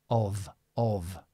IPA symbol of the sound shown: ɒv